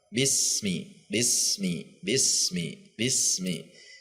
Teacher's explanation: sin huruf yang mengalir sehingga tidak dihentak, tidak memantul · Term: sin sukun